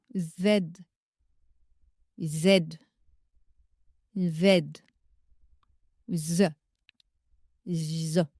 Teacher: Sa particularité réside dans le fait qu'il est souvent confondu avec son homologue sourd, le son S, lorsqu'il est placé entre deux voyelles. Le son Z est sonore, ce qui signifie que vos cordes vocales vibrent lorsque vous le prononcez.